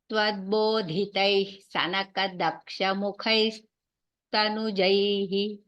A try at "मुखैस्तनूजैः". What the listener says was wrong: स्तनूजैः again दीर्घम्